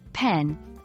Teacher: the short e sound in pen can sound closer to pin